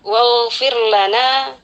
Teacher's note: Waghfir lana, ada ghain sukun, ghain sukun di sini kita penuhi juga sifat isti'ala dari huruf ghain ini